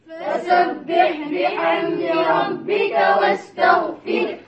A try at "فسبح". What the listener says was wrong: Satu lagi fasabbih. Bi. Ba di bawah bunyi apa? Bi bukan beh. Fasabbih. Fasabbih salah, itu logat logat Melayu kita. Fasabbih.